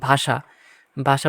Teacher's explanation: তারপর মার্কারটা নেই, কোথায় গেল, হ্যাঁ। মূর্ধন্য ষ মূর্ধন্য ষ বর্ণ এর উচ্চারণ তালবস্যের মতো হবে, মানে তোমার মূর্ধন্য ষ থাকলে তালবস্য উচ্চারণ হবে, যেমন ভাষা, ভাষা উচ্চারণ হবে ভয়কার তালবস্য একাশে ভাষা।